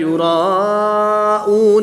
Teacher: الف سے پہلے را پر زبر ہے تو الف مدہ ہوگا، الف مدہ کے بعد حمزہ اسی کلمے میں ہے تو یہاں پر مد متصل ہوگی، 3 سے 5 الف تک کھینچ کر پڑھیں گے۔